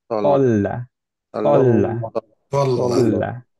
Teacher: কিন্তু আমাদের তল্লা যখনই লামটা ধরবো আমাদের ব্যাক অফ দ্য টাংটা নিচে নামায় ফেলতে হবে